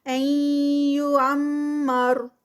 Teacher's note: نون ساکنہ کا رول اور اس کے بعد یا آ رہی ہے تو ادغام ہو رہا ہے یہاں پر، ادغام ود غنہ۔ پہ غنہ، مر را یہاں پر اینڈ پر ہیوی ہوگا۔